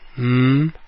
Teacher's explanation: the airflow comes out of your nose and not out of your mouth